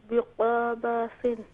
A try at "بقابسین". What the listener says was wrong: قاف کو کیوں کھینچا آپ نے؟ بقابسین.